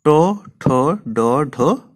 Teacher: জীবা তালুর একটু ওপরে গিয়ে কোথায় স্পর্শ করল না মূর্ধাতে স্পর্শ করল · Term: মূর্ধন্য ব্যঞ্জন